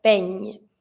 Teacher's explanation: I need to hear the ñ